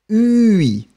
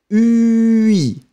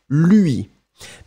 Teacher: remember that this U sound is extremely narrow. It's not U, so it's not the round one.